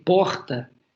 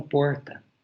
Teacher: eles falaram português com fonética tupi ou então ao invés de dizer porta eles usaram esse r retroflexo